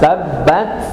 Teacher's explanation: kalau ketika kita mengucapkan huruf ta sukun itu memang ada hames pecah tetapi bukan C ya bukan C tetapi tetap makhrajnya ta. baru kemudian keluar udara sedikit. Jadi bukan tabbat tapi tabbat begitu ya.